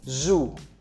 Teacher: Make sure you are making a vibration every time you pronounce your Z, as in zoo.